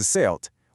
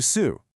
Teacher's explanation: That hard final consonant, the T sound, got dropped, smoothing the word out into su.